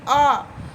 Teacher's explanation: ना हम आगे जीभ निकल रहा है, ना हमारा जीभ पीछे की ओर जा रहा है, बीच में, ठीक है। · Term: मध्य स्वर